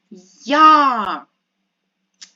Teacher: коли ми її говоримо то чуємо два звуки й та а й у нас завжди М'який приголосний а а голосний тому коли